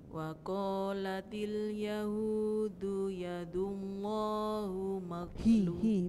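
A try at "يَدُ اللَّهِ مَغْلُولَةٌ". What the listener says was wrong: bukan hu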